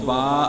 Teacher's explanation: با کا مخرج دونوں ہونٹوں کا خشک حصہ، یعنی جب ہم دونوں ہونٹوں کے خشک حصے کو ملاتے ہیں تو با ادا ہوتا ہے۔